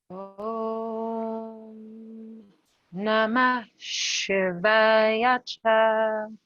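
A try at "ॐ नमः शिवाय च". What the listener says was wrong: Try to land on the sh a little sooner. Simply namash, namash, as though you were saying namash.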